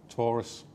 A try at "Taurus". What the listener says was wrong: Taurus. Careful how you say that. Not Tory. Taurus.